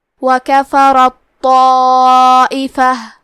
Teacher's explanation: آخری میں تا ساکن ہے، پھر حرف الطو ہے کلمت طائفہ، یہاں بھی حکم ہے ادغام، تو ہم تے کو تو میں ملا کے صرف تو اور تشدید کے ساتھ پڑھیں گے